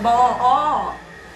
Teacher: From that, immediately go to this vowel, ba, Now that is not just going to happen just like that. That is a sort of a back vowel. The tongue will have to come a little backwards.